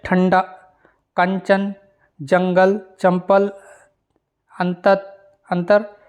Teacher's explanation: ऊपर जो एक बिंदी लगती है अनुस्वार, तो अनुस्वार के उच्चारण में वायु जो है वो नाक से निकलती है और उच्चारण झटके के साथ होता है